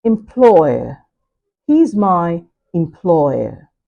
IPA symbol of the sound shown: ɔɪə